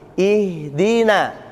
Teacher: sifat yang paling menonjol di sini kan dia termasuk hamas ya. Namun sifat berikutnya adalah dia termasuk dari rakha. Makanya ha mengalir